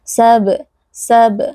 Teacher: huruf ba sukun berlaku qalqalah ya, dengan cara kita pantulkan bunyi huruf ba dari makhrajnya. Sab, sab ya, jadi memantul di bibir karena huruf ba keluar dari bibir.